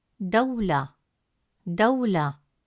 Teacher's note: This is common in the middle of words. When waw carries a sukoon, it holds its original u sound without adding any vowel. This gives the word a steady, clear pronunciation in the middle.